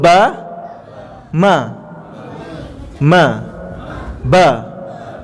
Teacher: makhraj dia maksudnya tempat keluar dia sama